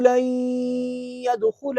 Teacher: نون ساکن کے بعد یا ہے ادغام